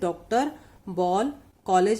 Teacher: औ की ध्वनि आ और ओ के बीच की है, यानी कि इसके ऊपर मात्रा नहीं होती है लेकिन उसको ओ का स्थान ही दिया जाता है।